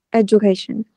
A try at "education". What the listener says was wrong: Đấy, không phải âm đờ nhé. Education. J. Ừ, education.